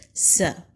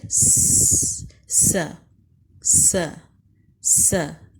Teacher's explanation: اس میں تیز سیٹی کی آواز آتی ہے